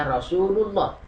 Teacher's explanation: Dibaca tafkhim adalah apabila lam jalalahnya didahului fathah seperti ini minallah, atau didahului domah seperti umpamanya Rasulullah.